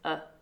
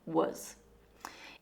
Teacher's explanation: the schwa is a weak, relaxed, uh, sound.